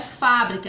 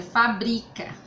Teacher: Fabri, o bri é mais forte, cá.